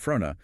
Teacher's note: By using a quick oo or schwa sound and maintaining that double N sound fruna, the speaker is prioritizing a continuous nasal airflow